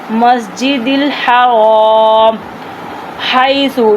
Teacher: ہم نے سا کی سیٹی کی آواز نہیں نکالنی، سا کو سا پڑھنا ہے